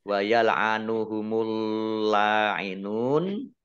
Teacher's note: Nah, ini alif lamnya, ini alif lam syamsiah. Karena tidak dibaca, langsung masuk ke huruf berikutnya, yaitu lam, ditandai dengan ada tasdidnya. Lamnya dibaca double. Kemudian lam fathah berdiri mad tabi'i, panjang 2 harokat.